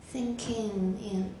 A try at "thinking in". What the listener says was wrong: You're saying thinking. It's always 应该的 in. Thinking in. In. Your pronunciation is beautiful, but 这个地方你要开始注意. First of all, linking, and finally, 词尾的 velar 跟 alveolar 你要注意. 因为这应该是 thinking. Thinking.